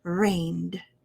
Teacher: we just want that d to end and air to stop right after the d sound